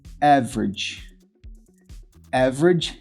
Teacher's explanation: Quando a palavra tem 2 sílabas ou mais, e a sílaba tônica é essa, é a primeira sílaba, é a tônica, average. A primeira vogal da segunda sílaba a gente não pronuncia.